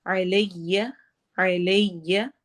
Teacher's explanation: یا پہ شد ہے، سختی سے پڑھنا ہے، لیکن اس میں ژ والی ساؤنڈ نہیں آئے گی